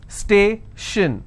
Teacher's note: Station, so I will stress on stay.